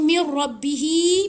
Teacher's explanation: ini namanya Mad Silah qasirah dia jadi panjang sebab disambung diantara bihi dengan kalimat